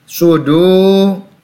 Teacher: dal berharokat dhamma berhadapan dengan wawu sukun, mad tabi'i, dibaca 2 harokat, panjang 2 harokat.